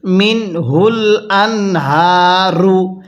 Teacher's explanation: এই যে মিন এখানে নুনটা স্পষ্ট করে পড়বো কারণ নুন সাকিনের পরে হাটি ইজহারের হরফ আর নুন সাকিনের পরে ইজহারের